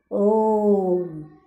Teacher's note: जैसे ओम, इसके बोलने में 3 समय लगा, तो 3 से भी ज़्यादा लग सकता है, इस तरह के वर्ड हैं। तो ओम का उच्चारण करते समय ओ की लंबा खींचा जाता है। लंबा खींचा जाता है क्या, मतलब कि ज़्यादा देर तक उच्चारण करना पड़ता है। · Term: प्लुत स्वर